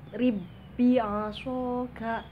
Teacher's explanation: Nah, jadi nggak perlu dibaca rib bi'a, nggak usah dipantulkan, tapi dia langsung masuk ke huruf selanjutnya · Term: idgham mutamatsilain